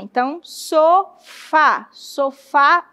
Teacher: Sofá é a mais forte, né? O fá, na verdade, é a mais forte, é a última sílaba mais forte. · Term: oxítona